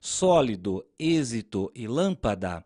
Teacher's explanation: nas palavras sólido, êxito e lâmpada, a sílaba que nós pronunciamos com mais força é a antepenúltima. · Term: proparoxítonas